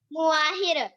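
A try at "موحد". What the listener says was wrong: मुआहिर नहीं, मुवाहिद, डाला ना आखिर में, मुवाहिद।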